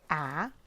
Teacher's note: When we say a, the tongue is very relaxed in the mouth and it's low in the mouth